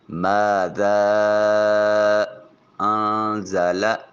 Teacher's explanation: ذا میں الف خالی از حرکت، اس سے پہلے والے حرف ذال کے اوپر زبر، الف مدہ، محل مد کے بعد سبب مد انزلہ میں جو الف کی صورت میں حمزہ لکھا ہوا ہے یہ سبب مد ہے، دوسرے کلمہ میں موجود ہے، مد منفصل ہے، 2 سے 3 الف کی مقدار اس مد کو لمبا کریں گے · نون ساکن کے بعد زا حرف اخفا ہے، نون کو اپنے مخرج میں چھپا کر ادا کریں گے